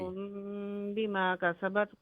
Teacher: میم ساکن کے بعد با ہے نا اخفا شفوی